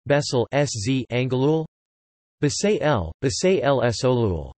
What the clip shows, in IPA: bɛseːl bɛseːls ɒŋɡolul